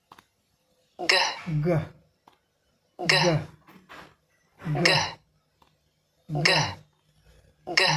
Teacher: जीभ का पश्च भाग, जीभ का पिछला भाग हमारा उठता है और वहाँ हार्ड पैलेट में जाकर सटता है। पीछे हवा यहाँ रुक जाती है।